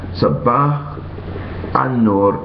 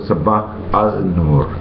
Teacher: That means that when the al precedes a sun letter, the l disappears and the beginning letter of the next word, the nun, is doubled